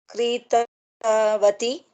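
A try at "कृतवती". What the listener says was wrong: Correct. Kritavati, dirga.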